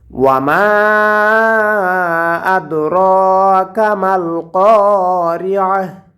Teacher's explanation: আয়াতের শেষে গোলতা যদি থাকে তাহলে অক্ফ করার কারণে গোলতাটা হা হয়ে যায়